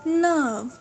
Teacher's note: यहाँ पे again आर silent है